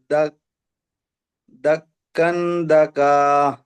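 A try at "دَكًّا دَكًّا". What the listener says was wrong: ধাক্কা, এখানে কাবের মধ্যে তাসদিদ আছে, ধাক্কান ধাক্কা।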